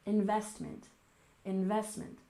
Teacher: investment. We stress the second syllable, investment, investment.